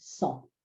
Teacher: Cent is pronounced without a T at the end.